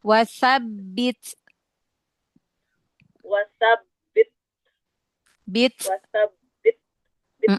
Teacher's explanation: Jadi dia syiddah dulu di makhrotnya, baru direnggangkan sedikit makhrotnya sambil dialirkan nafasnya. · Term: hamas